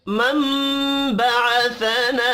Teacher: लना अलिफ मद्दा है, एक अलिफ के बराबर खींच कर पढ़ेंगे। मम बअसना, मम यहाँ पर इक़लाब होगा।